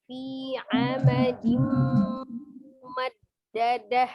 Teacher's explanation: Sukun atau tanwin yang bertemu dengan huruf mim maka dihukumnya adalah idgham bi gunnah. Dilebur ke huruf mimnya disertai dengan dengungnya.